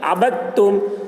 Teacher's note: جیسے عبدتم، اب دیکھیے دال میں جزم ہے اور تا کے اوپر تشدید ہے، تو دال والے جو جزم ہے اس حرف کو نہیں پڑھیں گے بلکہ با کو تا کے ساتھ ملا کر پڑھیں گے